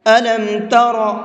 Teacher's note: را کو پر کر کے پڑھیں گے، منہ بھر کے پڑھیں گے، اس لیے کہ را کے اوپر زبر ہے، اور را پر زبر ہوتا ہے تو اس کو منہ بھر کے پڑھتے ہیں۔